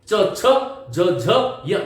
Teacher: च छ ज झ य बिल्कुल जो है एक तारतम्यता में ध्वनि निकलनी चाहिए और तालु से निकलनी चाहिए